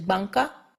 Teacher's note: this is an N produced with the back of the tongue instead of with the front